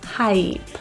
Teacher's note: Hype has a diphthong vowel, I. That E portion is generally the part that's missed. So go for the smile, hi, and your tongue up, hype.